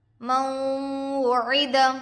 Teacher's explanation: نون پر جزم ہے، نون ساکن ہوگا. نون ساکن کے بعد حروف یرملون میں سے واو دوسرے کلمے میں آ کر ہے، غنے کے ساتھ ملا کر پڑھیں گے. اس کو ادغام مع الغنہ اور ادغام ناقص بھی کہتے ہیں.